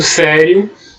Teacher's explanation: o ditongo IO, que é a semivogal I mais a vogal O